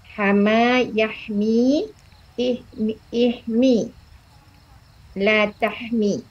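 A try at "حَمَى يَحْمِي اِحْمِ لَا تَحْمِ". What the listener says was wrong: Betul.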